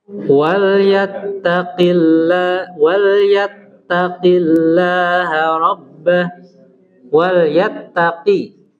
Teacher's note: usahakan huruf qaf itu jangan keluar udara